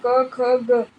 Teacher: કંઠોઠ વિપમુક્કમ કંઠોષટ વિપ્રકમુક્તમ ગળું ને હોઠ બરાબર ખુલ્લા રાખવા પૂર્વક ક ખ ગ વગેરે કંઠીય વર્ગના અક્ષરોનું ઉચ્ચાર સ્થાન કંઠ છે એટલે ક ખ ગ વગેરે અક્ષરો નાકમાંથી નહી પણ ગળામાંથી જ